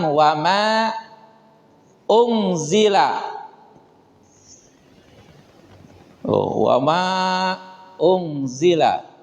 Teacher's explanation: Jadi Ma ini panjang Karena ada huruf mad kemudian di depannya bertemu dengan Hamzah ini nah pertemuannya ini menyatu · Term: Mad Jaiz munfasil